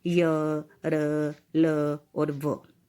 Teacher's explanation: इनका उच्चारण हम बिना किसी भाग को टच किए करते हैं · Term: अंतसत व्यंजन